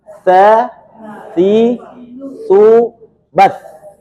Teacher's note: letak makhraj huruf taa itu antara ujung lidah dengan gigi seri atas bagian ujung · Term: huruf hams